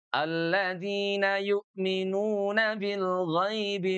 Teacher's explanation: huruf gain itu dari tenggorokan bagian atas ya. Adnal halq g dibaca dengan suara menebal. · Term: huruf ghain